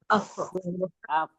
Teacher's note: अफ में हमारे ऊपर के दो जो सामने के दांत होते हैं वो नीचे के होठों के गीले हिस्से पे लगते हैं, तो वहां जी से फा अदा होता है।